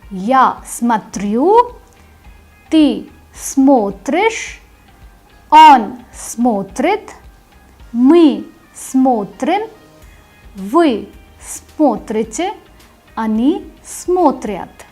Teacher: In the ya form the stress is on the ending, and in the remaining conjugated forms the stress goes on the stem. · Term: stress mark shifts